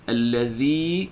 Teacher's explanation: zal mesti keluar kan lidah sedikit daripada guntingan dua gigi depan